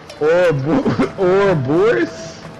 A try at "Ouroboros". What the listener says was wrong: Where are you getting Boros from? Where are you getting the eye from? Uroboros. Uroboros. Uroboros.